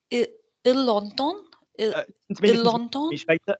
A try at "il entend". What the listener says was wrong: Don't keep stabbing me. Slide on the vowel. Il entend. Slide.